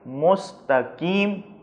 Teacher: اگر آپ اس کو پتلا پڑھیں گے مستقیم تو یہ کاف ہو جائے گا اور یہ لفظ غلط ہو جائے گا، لہذا موٹا کر کے پڑھیں گے مستقیم۔